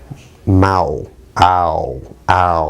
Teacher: You could just tell by the lip rounding it's a dynamic kind of vowel. It's a diphthong.